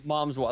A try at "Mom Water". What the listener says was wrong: there's no S. It's just mom water,